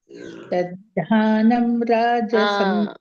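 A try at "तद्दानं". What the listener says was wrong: ದ ಅಂದ್ರೆ ಮತ್ತೆ ಅಲ್ಲಿ ಇದು ಬರುತ್ತೆ ದೊಡ್ಡದ ಮಹಾಪ್ರಾಣ ಆಗುತ್ತೆ ಇಲ್ಲ ಮಹಾಪ್ರಾಣ ಇಲ್ಲ ಅಲ್ಲಿ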